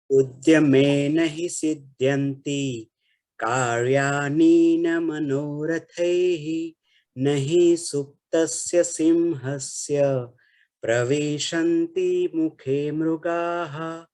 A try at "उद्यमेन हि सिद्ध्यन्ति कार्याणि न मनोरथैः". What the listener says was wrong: Karyani is not there. Dirgha is not there. It is Rasva only. And one more thing, Pravishanti also, it's Pravishanti.